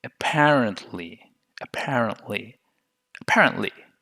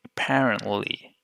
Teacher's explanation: the tongue is much more sticking toward the alveolar Ridge